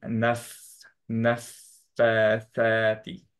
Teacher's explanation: আমরা জানি সিফাতটা হচ্ছে হামস এর জন্য নাফ এখানে একটু বাতাস বের করবো একটু টাইম দিব জাস্ট অ্যাজ সিন সদ এগুলোর মতো